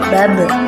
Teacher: Ketika huruf ba dalam posisi mati, maka suaranya terdengar mantul, seperti babe.